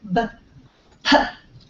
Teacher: have the same place of articulation right they're both bilabial · so you have the air stops at your lips and then pops out um so the these are a a pair they have the